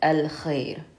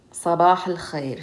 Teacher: Therefore, it's considered a moon letter. So moon letters, we pronounce the al as we normally would